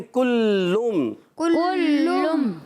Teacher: लाम पर भी हरकत है, खींचना नहीं, मगर लाम की हरकत मीम से मिलाएंगे। और लाम मुशद्दद है, ज़रा रुक कर भी अदा करें।